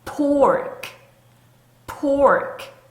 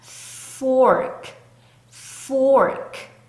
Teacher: 앞립발로 살짝 아랫 입술을 살짝 물어 줄 거기 때문에 그래요. 자, 두 입술을 만나지 못하게 앞니발이 방해하고 있죠